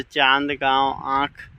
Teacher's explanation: हवा नाक और मुंह दोनों से निकलती है उसे अनुनासिक कहते हैं।